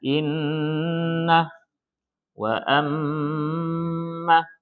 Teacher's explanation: Dengung itu disebabkan nun tasydid, mim tasydid. Maka konsisten setiap nun tasydid, mim tasydid dengung.